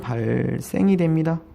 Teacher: 한자 리을 받침 뒤에 오는 디귿, 시옷, 지읒 발음 이런 것들은 뭐가 된다? 된소리가 된다